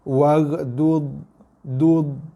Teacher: Dha bukan huruf qalqalah. Dia tak ada sifat lantunan.